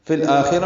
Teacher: فی الآخرہ میں لام ساکن یہ پڑھا جا رہا ہے، اظہار قمری ہے، آمد بدل ہے، دو حرکات لمبا کریں گے.